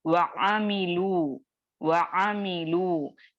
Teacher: तो क्या किए, जो हुरूफे मद्दा यानी वऊ का जो साकिन है उसको हज़फ कर दिया गया, वऊ को पढ़ा नहीं जाएगा बल्कि डायरेक्टली लू को सौत से मिला दिया जाएगा